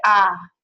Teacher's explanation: you see that a lot with Southerners, where instead of saying I, they'll say ah · you are turning a diphthong, like I, into a monophthong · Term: monophthongization